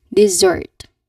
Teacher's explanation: With emphasis on the second syllable